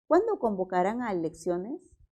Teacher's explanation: Es una pregunta, pero está encabezada con un pronombre. Entonces, siempre va a ser pregunta. El tono es descendente.